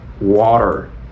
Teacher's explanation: las tes cuando están en medio de dos sonidos vocales entonces en inglés americano lo suavizan suavizan la t · bueno vamos a vamos a ver cómo sería en inglés americano la t intenta pronunciarla como una r si como la palabra pera